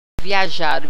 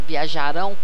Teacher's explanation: Dependendo de como você pronuncia, se você for pronunciar o ão com um pouco menos de força, viajaram, viajarão, quase que sai do mesmo jeito